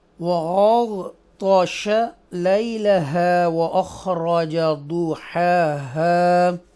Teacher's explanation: غائن اور طا دونوں بولڈ پڑھیں گے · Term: حرف مستعلیہ